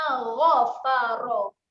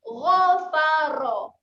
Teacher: Huruf ghain makhrajnya di hujung kerongkong. Jadi bunyikan di hujung kerongkong tu.